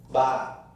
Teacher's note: the fully voiced bilabial initial stop